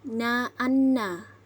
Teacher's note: N yaitu terdapat sengau di antara depan lidah dan batas belakang gusi. Pengucapan N yaitu na-anna.